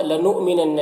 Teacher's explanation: حمزہ ساکنہ ہے، واو کی شکل میں جھٹکا لگے گا